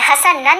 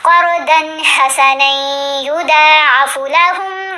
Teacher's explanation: مشدد یا آپ کو پتہ ہے حروف یرملون میں سے ہوتی ہے، تو ہم نے نون کو یا سے غنہ کرتے ہوئے ملانا ہے. حسنن نہیں پڑھنا، نہیں، نون کو یا سے ملایا جائے گا.